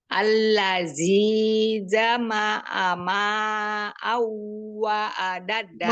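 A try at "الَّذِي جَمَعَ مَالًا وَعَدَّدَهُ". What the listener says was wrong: Malau, bukan ma'au, malau.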